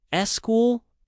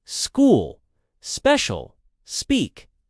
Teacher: in English we don't need the e just say school